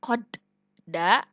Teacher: dal dipantulkan tetapi tidak terlalu memantul disebut dengan qalqalah sugro